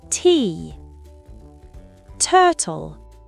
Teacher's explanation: le T reste toujours un vrai T, même entre voyelles. On ne fait pas de flap comme en américain. T. Turtle.